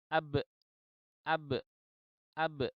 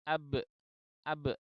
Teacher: Jadi setelah bibir itu dibuka, itu ternyata pangkal tenggorokan itu menghasilkan bunyi hamzah mati. Ya, karena pita suaranya tertutup atau terkatup. Akhirnya menjadi ab, ab.